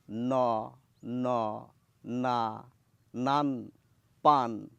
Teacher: এই ন বলতে গেলে জিভের সামনের অংশ দাঁতকে স্পর্শ করছে না